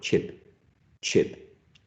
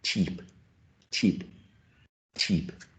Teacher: And the only difference is the vowel sound. In the first case, I is shorter, I, more relaxed. In the second word, E, E, E is longer and more tense. So we get chip, cheap, chip, cheap.